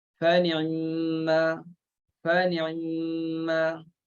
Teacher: ikhtilaskan huruf ain itu bunyikan sedikit aja huruf ain. Dia disebut sebagai 2/3 harakah.